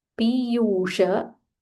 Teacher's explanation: This is P dirgha and U also dirgha followed by Murdanya sh.